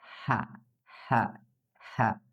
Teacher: tempat keluarnya itu ditenggorokan bagian tengah di sini